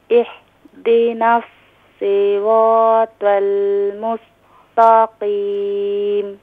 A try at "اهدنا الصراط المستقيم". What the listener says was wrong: Still you pronouncing the ha. Ha is pronouncing middle of throat. You can pronounce ha اهدنا طاء is pronounced full mouth صراط المستقيم ان مستقيم نو طاء مستقيم ان مستقيم تاء yes lightly ما شاء الله